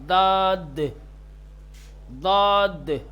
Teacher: پرحجم اور موٹا، پرحجم کا مطلب وہی موٹا ہوتا ہے، موٹا تلفظ کیا جائے گا · زبان کا کنارہ اوپر کے دانت کے کنارے سے، دائنی طرف یا بائیں طرف فرق نہیں پڑتا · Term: حرف داد